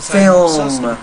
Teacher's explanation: It almost sounds like you're making film is. You're almost making it two syllables, but the word is film.